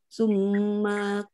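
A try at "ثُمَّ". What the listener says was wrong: Sumanya sedikit lagi ditahan. Kurang, masih kurang Bu.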